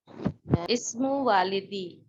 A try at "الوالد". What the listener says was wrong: واہ نہیں ہے، واہ کو لمبا نہیں کریں. ولادی.